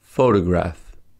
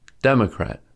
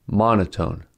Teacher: The words photograph, diplomat, democrat, and monotone have stress on the first syllable. But when suffixes y or ic are added to the word, stress shifts to the second and third syllable respectively.